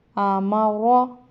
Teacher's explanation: پر پڑھے جانے کا مطلب ہے کہ اس کو موٹا ادا کرتے، اس کی آواز موٹی پڑھی جاتی ہے